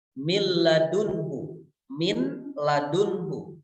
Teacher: ladunka seolah-olah not itu hilang karena memang betul kepada berulang sehingga lam itu seperti dibaca satu huruf yang bertasydid · Kemudian contohnya adalah ketika menghadapi lam, min ladunhu, min ladunhu, maka cara bacanya adalah leburkan bunyi nun sukun itu kepada lam, min ladunhu, seolah-olah nun itu hilang karena memang lebur kepada huruf lam, sehingga lam itu seperti dibaca satu huruf yang bertasdid